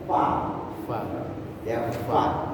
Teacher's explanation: Jadi yang benar itu gigi ketemu bibir, bukan bibir ketemu gigi. Gigi atas, nah, ketemu bibir bawah. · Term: huruf fa